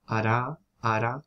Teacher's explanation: hay un contacto completo entre el ápice de la lengua y los alveolos pero es ultra breve